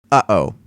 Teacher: If you say uh-oh, you already utter two of them, one before and one right after the first If you pay attention, you'll feel a slight clicking deep down in your throat. That's the sound you're looking for. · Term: glottal stop